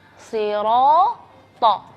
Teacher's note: Alif di situ tebal karena huruf yang sebelumnya adalah huruf yang tebal